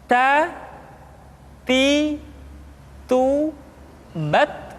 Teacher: Kemudian huruf Ta ketika diucapkan terdengar ada nafas yang mengalir, atau dalam ilmu tajwid disebut dengan sifat al-hamas.